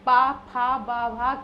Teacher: पूरा पा वर्ग किससे बोला जाता है, आप देख रहे हैं पा फा बा भा कहने पर आपके ओंठों को मतलब कि मिलना पड़ता है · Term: ओष्ठ